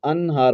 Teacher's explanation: قاعدہ کیا ہے کہ اگر نون ساکن کے بعد یا نون تنوین کے بعد حروف حلقی کے جو 6 حروف ہیں حمزہ، ہا، عین، ہا، غین، خا، ان میں سے کوئی حرف بھی آ جائے تو نون کو ظاہر کر کے پڑھتے ہیں، غنہ نہیں کرتے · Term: اظہار حلقی